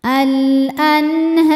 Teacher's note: Sebab ha berharakat fathah panjang. Cara bacanya dipanjangkan dua harakat. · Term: mad thobi'i muqaddar